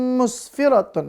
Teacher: ada tanwin in lalu bertemu huruf mim maka harus dibaca dengung